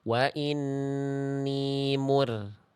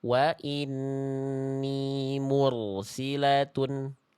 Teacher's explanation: Ro sukun itu kalau sebelumnya domah enggak boleh tipis. · Jadi ro sukunnya tebal harusnya ya.